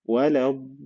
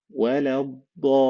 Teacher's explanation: You will notice that we stretched the vowel of mad by 6 beats. 6 حركات. 6 حركات. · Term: mad lazim